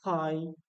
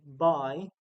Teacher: When saying pi, you can feel a puff of air, but when you say by, you can't feel that puff of air. That puff of air, pi, is what is aspiration.